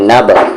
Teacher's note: قلقلہ ہوگا نب، آواز باؤنس کریں گے